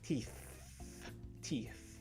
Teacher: sounds that has the tongue between the teeth this is the secret to making the strong th sound as you probably saw when you're watching me saying the words